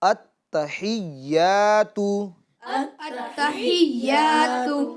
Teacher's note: اس کے اندر جو ہا ہے وہ بڑی ہا ہے جو درمیان حلق سے ادا ہوتی ہے